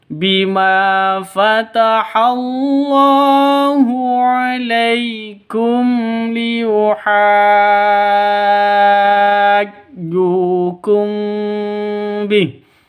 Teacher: mim mati bertemu dengan lam, jelas terang karena izhar safawi ini hukum mim sukun ya, atau mim mati.